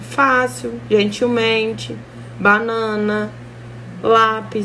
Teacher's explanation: paroxítona sílaba tônica é a penúltima